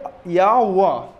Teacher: या आपका ई के समान आवाज़ देता है, वह आपका ऊ के समान आवाज़ देता है, इसीलिए इन्हें अर्ध स्वर कहते हैं।